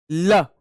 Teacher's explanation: ल बोलो, ल, तो ल में आप देखेंगे ल, जीव ऊपर गई और एक साथ यानी पीछे वाले हिस्से थे ल, तो हमारी जीव थोड़ी सी मुड़ती है, तो इसी को बोलते हैं, ये पार्श्व से बोली जाती है, यानी जीव के पार्श्व भाग से, तो इसलिए ल पार्श्व भाग से बोला जाता है, तो इसलिए पार्श्विक इसको कहा जाता है।